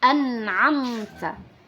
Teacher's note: huruf pertama adalah huruf hamzah dan huruf kedua adalah huruf Ain jadi jangan sampai kita baca sama